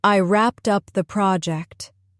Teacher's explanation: Notice the strong stress on wrapped and prod.